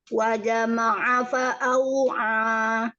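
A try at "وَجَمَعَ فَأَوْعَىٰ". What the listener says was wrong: Wa jama'a, ja pengen syiddah, pengen jahar lagi. Huruf jimnya.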